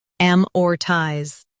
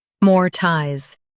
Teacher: In US, stress AM. In UK, stress more.